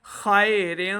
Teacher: خا حروف مستعلیہ سے اس کو موٹی آواز کے ساتھ پڑھیں